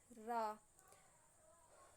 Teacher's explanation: प्रकंपित नाम से ही समझ में आ रहा है कंपन। ऐसे व्यंजन वे व्यंजन जिनके उच्चारण में जिह्वा को 2-3 बार कंपन करना पड़ता है, मतलब जिह्वा में हमारे कंपन होता है, प्रकंपित व्यंजन कहलाते हैं।